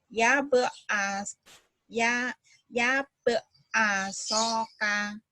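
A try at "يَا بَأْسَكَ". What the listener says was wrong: Ya ba'asaka. Bukan asoka.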